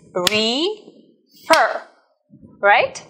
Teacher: In this case, if it has two syllables, we need to pay attention to the stress. So the stress is on the second syllable